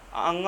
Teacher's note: हर वर्ग का लास्ट वाला जो होता है उसमें पूरा शब्द जो है नाक से निकलता है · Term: नासिक